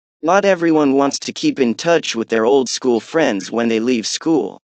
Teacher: the first intonation, when you see the rise and fall of tones, that was on not everyone